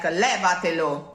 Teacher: the accent falls on the pre-penultimate syllable